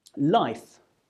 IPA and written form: laɪf (life)